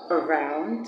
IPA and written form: ə'raʊnd (Around)